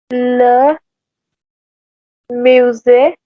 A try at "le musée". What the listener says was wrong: yeah, perfect.